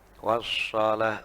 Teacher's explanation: Jadi shad itu bersiul tapi tanpa mencucu. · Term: sofirnya